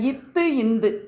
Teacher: மேல்வாய் பல்லின் அடியை நாக்கின் நுனி பொருந்துவதால் பிறக்கிறது